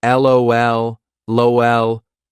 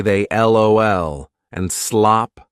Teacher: on its own without linking this would be dark but when it's linked it's light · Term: dark L